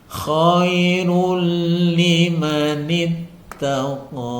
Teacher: cara membacanya dimasukkan tanpa disertai dengung bacaan tajwidnya disebut idgham bila ghunah tidak boleh dibaca dengan dengung cukup dimasukkan rulli ya koirul liimanittaqo · Nah ini dhomaten atau tanwin bertemu dengan lam, cara membacanya dimasukkan tanpa disertai dengung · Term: idgham bila gunnah